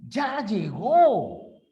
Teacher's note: cuando nosotros mostramos entusiasmo la mayor fuerza de voz está al inicio aflora nuestra emotividad ya llegó el tono es descendente o sea